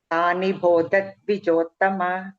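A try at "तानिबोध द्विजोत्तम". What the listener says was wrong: it is ಬೋಧ ಧ ಇಸ್ ಮಹಾಪ್ರಾಣ ನಾಟ್ ಬಹ okay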